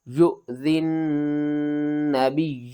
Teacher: ذال کو آپ نے نون مشدد کے ساتھ ملانا ہے اور نون مشدد کے اوپر آپ نے غنہ کرنا ہے، نون کو 2 بار پڑھنا ہے، نون کے اوپر سختی بھی کرنی ہے۔